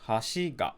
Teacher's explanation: look at odaca the pattern this is the pattern where basically the entire thing is flat and then the particle attaches low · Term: odaka